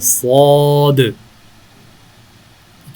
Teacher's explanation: اس کا نام موٹا اور ذرا بھاری آواز میں لینا ہے.